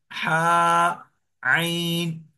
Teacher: हा वहां से अदा होती है। और आइन, आइन और हा, ये हलक के ये बीच वाले हिस्से से अदा होते हैं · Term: हलक का बीच वाला हिस्सा